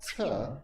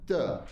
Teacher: you make the sound in the same place in your mouth so your teeth are together but lots of air comes out but duh no air comes out because it's voiced